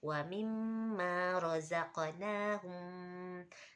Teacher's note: hum enggak itu karena izhar safawi jadi enggak guna